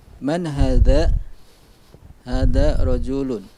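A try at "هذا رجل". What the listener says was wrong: Dha diperbaiki sekali lagi Pak. Man hadha? Dha. Hadha rajulun.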